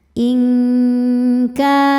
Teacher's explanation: Berikutnya ada hukum ikhfa hakiki ab'ad karena nun sukun bertemu kaf. Cara bacanya nun disamarkan ke kaf disertai bunyi dengung. Dengungnya besar ya. Ingka ka mad tabi'i dhahiri sebab ada alif didahului fathah, maka huruf kaf panjang 2 harokat.